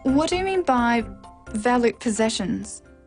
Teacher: This is a w question, so it needs a falling tone.